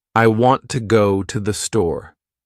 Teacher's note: The words want, go, and store are strong. The others are weak. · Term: sentence stress